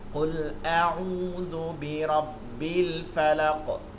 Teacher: কফটা হচ্ছে কলকলার হরফ এর জন্য এটা জজম হবে সাথে প্রতিধ্বনি হবে